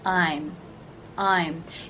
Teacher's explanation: one syllable the AI as in buy diphthong and the M consonant sound